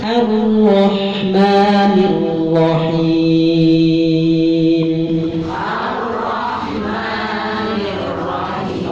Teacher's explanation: Ra tasydid dua ketuk tekan.